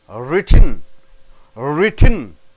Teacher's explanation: you need a sharp upward sliding intonation